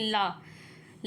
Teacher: हमारी जो जीभ है वो दांत से और मसूड़े से टच हो रही है